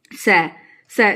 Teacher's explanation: जब आप स का उच्चारण करते हैं तो जीभ का आगे का भाग दंत को यानी कि दांतों को स्पर्श करता है